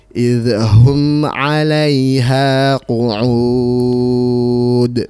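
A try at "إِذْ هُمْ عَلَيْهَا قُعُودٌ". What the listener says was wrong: Afwan, jangan sampai terkesan memantul ya. La. Idhum. Ya, jangan ya.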